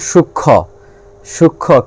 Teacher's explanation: সূক্ষ্ম ক্ষীয়র সঙ্গে মফলা আছে, এখানে ময়ের উচ্চারণ নাই